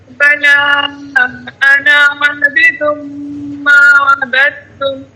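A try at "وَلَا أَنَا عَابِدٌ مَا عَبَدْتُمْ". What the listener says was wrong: میں عبدتم، ما عبدتم نہیں، میں عبدتم.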